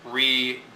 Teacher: Notice it's unstressed, unstressed, stressed, unstressed.